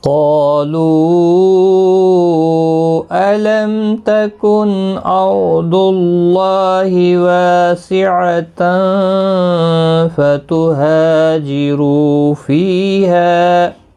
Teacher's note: حروف مدہ کے بعد جب بھی حمزہ بشکل الف آتا ہے تو مد منفصل لگتی ہے، 3 الف کی مقدار کے برابر کھینچ کر پڑھیں گے · میم ساکن کا اظہار ہوگا، نون ساکن کے بعد حمزہ ہے، اظہار حلقی ہوگا، اور را اس زبر کی وجہ سے پر پڑھا جائے گا۔